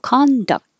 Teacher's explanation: the back of the tongue goes up for the K presses against the top of the mouth for the T and just stops the airflow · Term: KT combination